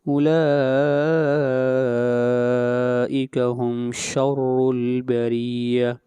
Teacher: اولا کو لمبا کریں گے تین الف کے برابر، یہاں پر مد متصل ہو رہی ہے